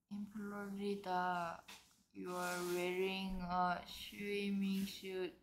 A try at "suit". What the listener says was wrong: 슛이 아니라니까. In Florida, you're wearing a swimming suit.